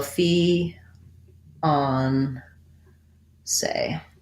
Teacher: we use an a diphthong because we americanize it